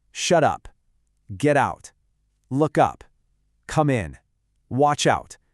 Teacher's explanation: The consonant at the end jumps right onto the vowel at the beginning. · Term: consonant to vowel links